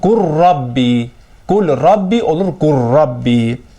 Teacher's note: Yəni, qul Rabbi kəlməsində ləm aradan gedir, olur qur Rabbi. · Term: idğam